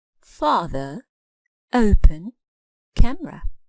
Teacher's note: You can clearly hear the stress on the first syllable.